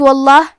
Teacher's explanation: یہاں حرف اللام کا حکم ہے تفخیم تو ہمیں حرف اللام کو موٹی آواز میں پڑھنا ہے